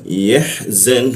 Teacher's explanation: Ee lalu ee wau dan nun kita matikan seolah-olah muncul bendera. Maka nunnya itu dibaca tiga ketukannya